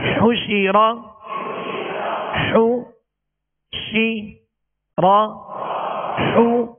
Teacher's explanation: حا پر پیش ہے، اس کی ادائیگی میں ہونٹوں کو کامل گول کریں گے، شین کے نیچے زیر ہے، آواز کو گرا کر، اور زبر را پر ہے تو آواز اور منہ دونوں کھول کر اس کو ادا کریں۔